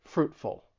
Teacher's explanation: the stress is on that first syllable and that t in Fruit it's a stop te fruitful